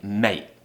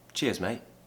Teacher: to say mate however you need to know how to pronounce the glottal T which is essentially a sound we create in the throat where we cut the sound off and we create some tension it's almost like I'm silently pronouncing it inside of my mouth